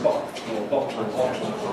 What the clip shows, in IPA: ˈbɒtl̩